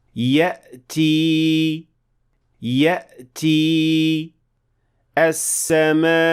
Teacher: حمزہ خالص طور پر آواز کی ڈوریوں کو بند کرنے کا عمل ہے، جس میں ہوا کو لمحہ بھر کے لیے روکا جاتا ہے